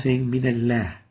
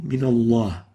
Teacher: the mistake here would be giving the lam attenuation, tarqiq, where it should have been velarized, tafkhim.